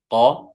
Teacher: huruf qaf di sini dipangkal lidah qa dan dia tebal, isti'lah bacanya tafkhim, bacanya tebal, qa, dan bertemu langsung dengan huruf waw layyinah atau lin, huruf lin.